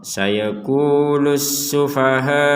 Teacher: kata as-sufaha'u ini kita harus membacanya 4 sampai 5 harokat untuk huruf H-nya ya.